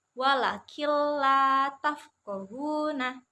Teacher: seperti ini [Musik] Nah jadi ee Nun sukunnya itu hilang suaranya